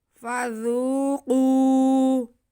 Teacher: زال نرمی سے ادا ہوگا، اس میں سیٹی کی آواز بالکل بھی نہیں آئے گی